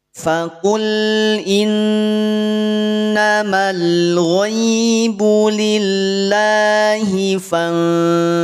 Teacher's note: Fantaziru dibaca tipis ikhfa'nya ya. Jangan menjadi tebal.